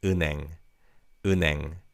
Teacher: in fast speech, the 니은 받침 in the first syllable carries over to the second syllable